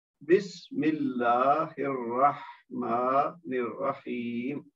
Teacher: آخر میں ویسے تو یا مد ہے 2 حرکت ہونی چاہیے, لیکن چونکہ میم ساکن کرنے کی صورت میں مد عارض بن جائے گا تو اس کو پھر ہم زیادہ لمبا کریں گے · سین ساکن ہے پہلے بسم میں تو وہ اس کا ہمس ہوگا, اللہ کا لام موٹا پڑا جائے گا کیونکہ اس سے پہلے میم کے نیچے زیر ہے.